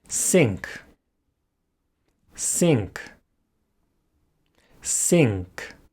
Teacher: So the N changes its point of articulation to match that of the following sound, in this case, K, which is again articulated at the velum. Normally, the English N is said at the alveolar ridge, but before K and G, it's said at the velum.